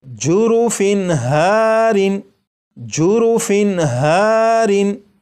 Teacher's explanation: تنوین کے بعد ہا ہے اور ہا حروف حلقی میں سے ہے، اس لیے یہ جو تنوین ہے اس کے نون ساکن کو ظاہر کر کے پڑھیں گے